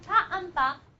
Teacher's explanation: Both of them are stops because they stop the air completely using the lips. Both of them are bilabial using the lips.